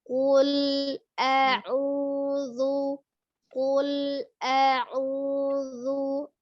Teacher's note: qul tidak dipantulkan, kemudian qafnya dijaharkan ya, tidak ada alhamesnya, bukan kaf.